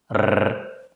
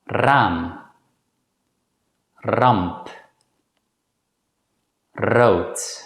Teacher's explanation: This sound is produced by rapidly vibrating the tip of the tongue against the hard palate. It's important to relax your tongue when pronouncing this sound. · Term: rolling R